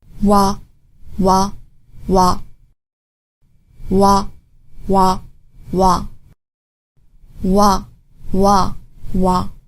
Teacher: of your mouth but not touching anything then round your lips the W sound comes from your rounded lips which open as the sound comes out